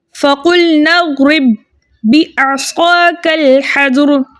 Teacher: ज़ेर होने की वजह से हम इस रा को बारीक पढ़ेंगे